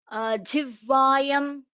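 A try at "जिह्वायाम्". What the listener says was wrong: It is jihvayam. Jihvayam. Again, when you're telling it together, you're missing the ha.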